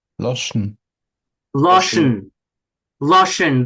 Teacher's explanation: The oi practically falls out. With the nasals, with the m and the n, it's almost not almost, it really is syllabic, right?